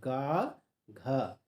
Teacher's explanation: गा और घा ये भी कंठ से ही बोले जाएंगे, कंठ से हैं।